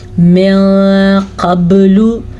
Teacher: मोटा क़ाफ और बा पे कलकला